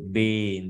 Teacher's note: bin đã rung từ đầu luôn